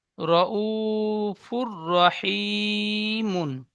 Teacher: হার উপরে দুপেশ এসেছে, দুপেশটি তানবিন। তানবিনের পরে ঈদগামে ইয়ার মালুনের 6টি অক্ষরের মধ্যে র এসেছে, তাই তানবিনের আওয়াজকে বিনা গুণনায় মিলিয়ে পড়তে হয়। · রর উপরে জাবার এসেছে, তাই রকে পুর করে পড়তে হয়। ও সাকিনের ডান দিকে পেশ এসেছে, একে ও মাদ্দা বলে। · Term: ঈদগামে তাম